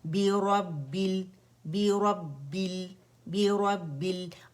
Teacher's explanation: اچھا بل کر کے موٹا نہیں کرنا ہے، لام باریک ہے، ٹھیک ہے. اور را جو ہے ہمارے پاس بس موٹا ہے. · بی انگلش لیٹر بی کی آواز ہونی چاہیے، ٹھیک ہے، با کسرہ بی کی، بے نہیں پڑھیں گے اسے